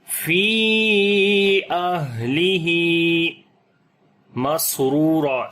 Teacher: سین کے اوپر صفت ہمس آ جائے گی، سانس جاری کریں گے، اور صفت صفیر بھی ہے، سیٹی کی آواز ہے، را کو موٹا پڑھیں گے، اس